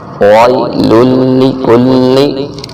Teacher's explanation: واو لین ہے، یا ساکن سے پہلے زبر ہے، یہاں کھینچنا نہیں ہے بالکل